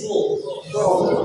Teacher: Jadi huruf so itu ujung lidah di antara dua gigi. Ini gigi ini di atas bawah, di antaranya ya.